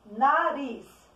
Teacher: Quando a tia pronuncia a palavra nariz, o ris é a sílaba tônica da palavra. Então, eu pronunciei ela com mais força, por isso ela é a sílaba tônica.